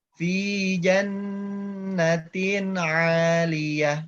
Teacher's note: Ada kaidah gunnah di sini, cirinya ada nun bertasydidnya. Jadi di sini ditahan dulu 3 harkat.